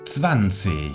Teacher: tenemos dos zetas que se pronuncian como TS, una W que se pronuncia como una V, y la G final podemos pronunciarla como si fuese una CH o podemos pronunciarla como si fuese una K, 20 o 20.